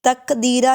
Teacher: تق میں قاف حروف کلکلہ میں سے ہے، آواز کو ہلا کر پڑھیں گے